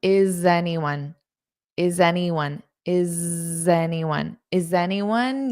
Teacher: notice this little bit of a z a voiced sound to connect them